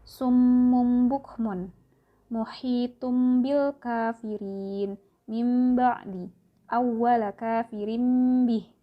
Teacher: Iqlab artinya apabila nun mati atau tanwin bertemu dengan huruf ba. Cara membacanya adalah dengan merapatkan kedua bibir disertai dengung, sehingga suara nun mati atau tanwin berubah menjadi mim mati.